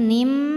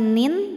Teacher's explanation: Cara bacanya tanwin dileburkan ke mim, qarnim, jadi bukan lagi nin tapi nim, masukkan ya, disertai bunyi dengung m. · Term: idgham bi gunnah